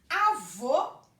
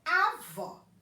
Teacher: Opa, nesse caso aqui, eu sei que um é masculino e o outro é feminino exatamente por conta da acentuação. O O é fechado, né? Usei o acento circunflexo. O O é aberto, eu usei o acento agudo. Então, nesse caso aí, o que marcou o masculino e o feminino foi o som, foi o fone, o fonema.